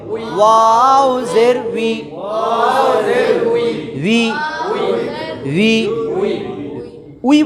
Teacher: খেয়াল করি, গতকালকে বলেছিলাম ওয়াওয়ের উচ্চারণ বাংলাতে ভি এবং বি এর মাঝামাঝি, কারণ বি উচ্চারণ করার সময় ওয়াও জের ভি এটার উচ্চারণ, বি এর উচ্চারণ ঠোঁট লাগে, ভি এর উচ্চারণও ঠোঁট লাগে, আর ওয়াও ঠোঁট লাগবে না, মাঝখানে হাওয়ার উপর চাপ দিয়া উই, ওয়াও জের উই, ঠোঁটটা একটু গোল হবে